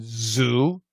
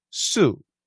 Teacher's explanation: The thing to remember is if you can see me, zoo, sue, the shape of the mouth, the shape of the tongue, the placement of the tongue, everything's the same. The Z and the S, the same exact placement of the mouth, the lips, the tongue. The difference is vibration.